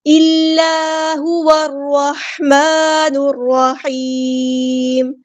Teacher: واو کو ہم نے را کے ساتھ ملا دینا، حمزۃ الوصل ہمارا ڈراپ ہو جائے گا · الا الف مد آیا تو مد اصلی کریں گے، 2 حرکات کے برابر لمبا کریں گے